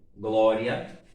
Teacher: Primeiro aparece a semivogal, depois a vogal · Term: ditongo